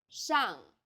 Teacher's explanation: the first syllable here is made of an initial 诗， and a final 昂， and a fourth falling tone.